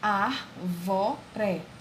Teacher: O ar é a sílaba tônica da palavra árvore.